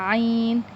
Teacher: عین یہ حلق کے درمیانی والے حصے سے ادا ہوتا ہے